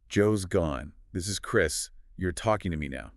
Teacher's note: He doesn't ask a question. He makes a slow downward inflecting statement. · It is deep, soft, slow, and downward inflecting. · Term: late night FM DJ voice